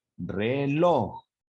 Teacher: la sílaba tónica es su última sílaba de su palabra por lo tanto de esa palabra es aguda